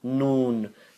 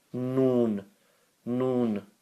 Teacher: You'll see that the tongue goes up towards the hard palate at 45 degrees.